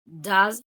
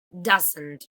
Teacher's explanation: So does would be with a schwa and doesn't again with the strat vowel, or do that generally goes with a neutralized u or with a schwa.